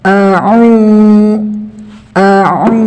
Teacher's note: Kemudian di sini ada harokat dhammah yang bertemu dengan wawu sukun, maka dibaca panjang 2 harokat seukuran 2 ketukan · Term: matobi'i